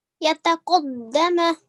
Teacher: Really nice hardening of the dal there again with the shadda.